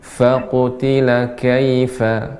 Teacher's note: Fa ini sifatnya adalah hamas. Banyaknya udara mengalir ya, berhembus.